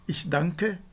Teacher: Esse N, ele tem exatamente esse som de uma nasal gutural, e tanto no caso do inglês quanto no caso do alemão, esse som ele é representado pela letra N, quando o N se encontra antes de K, né, e de G.